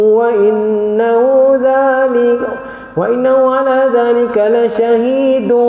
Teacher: Ada jadi idgham ma'al ghunnah. Kena muncungkan mulut kalau dia itu waw.